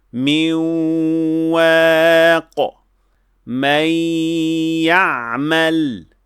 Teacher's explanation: So we pronounce the waw with a nasal sound and the ya with a nasal sound. This nasal sound is coming from the noon sakina. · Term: ghunnah